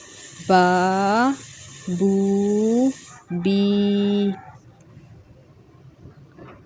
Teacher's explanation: ये तीनों जो हरूफ हैं ये खींचे जाएंगे एक अलिफ़ के बराबर, यानी 2 हरकत के बराबर इन्हें खींचना है। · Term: मद्दा खींचना